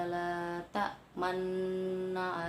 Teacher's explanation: La ta'manna adalah bacaan ismam. Ismam yaitu menampakkan domah yang hilang dengan isyarat bibir.